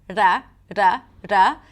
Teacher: the retroflex R where the tip of the tongue goes up and the bottom of the tongue touches the upper pallet ra.